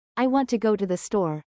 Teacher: Think about the sentence, "I want to go to the store." Instead of each syllable getting equal time, we emphasize want, go, and store. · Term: stress timing